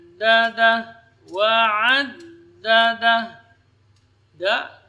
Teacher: ujung lidah berada di usul thanaya, di pangkal gigi seri atas.